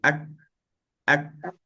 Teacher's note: Kita rasa tak kita punya pangkal lidah tu dekat sentuhan kat belakang langit atas tu kat tekak tu dia ada sentuhan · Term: huruf kaf